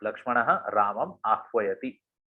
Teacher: रामम में जो अनुस्वार है उसने म का रूप पकड़ लिया है, क्योंकि अगला शब्द एक स्वर से शुरू हो रहा है, आ। अगर यहाँ पे आ, अगर आह्वयति की जगह अगर गच्छति ऐसा होता तो ये म जो है वो ऊपर ही रहता, अनुस्वार की तरह, एक बिंदु की तरह, जैसे यहाँ पे प्रीवियसली हुआ है।